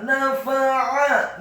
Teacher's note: Setelah digunakan idgham bi gunnah, kemudian fa-nya dibaca fathah satu harokat, ainnya ditekankan keluar dari tenggorokan bagian tengah